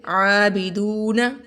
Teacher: آ کو لمبا کریں گے کیونکہ یہاں پر کھڑا زبر ہے